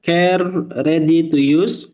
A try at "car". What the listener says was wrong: It's a car, Bapak. The car is not care. Kalau care itu peduli.